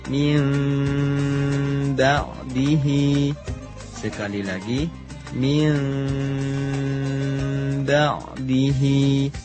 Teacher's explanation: Nun sukun bertemu huruf ba, hukumnya iqlab, yaitu mengganti bunyi nun sukun menjadi mim dengan cara menempelkan 2 bibir tanpa ditekan disertai dengung seukuran 2 harokat.